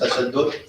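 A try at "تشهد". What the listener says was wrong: Tashahhud Tashahhud with a ha, not the dal.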